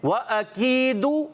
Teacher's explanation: جی ہاں واو کی ادائیگی ہونٹوں کی گولائی سے، حمزہ کو خوب واضح کر کے ادا کریں گے، کاف کو باریک رکھیں گے اور یا مدہ ہے، ایک الف کھینچ کر ادا کریں گے۔